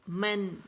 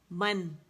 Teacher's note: اچھا دیکھیں کہ من، میں میم پہ گئی، دونوں ہونٹوں کے خشک حصے ملائے اور پھر میں نے اس کو حرکت کے مطابق جدا کر دیا. من، دونوں ہونٹوں کو من کریں.